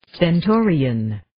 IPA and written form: sten'toʊriːən (Stentorian)